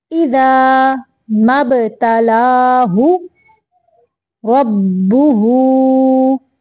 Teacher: مبتلاہ پہ صرف سیدھا پیش ہے اس لیے ہم اس کو لمبا نہیں کریں گے